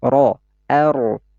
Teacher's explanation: huruf ro ini harus dibaca secara tafkhim. Ya, harus tebal.